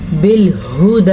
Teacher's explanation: بالہدی، ہا کے تلفظ کا آپ نے خیال رکھنا ہے، یہ ہا سینے سے نکلتی ہے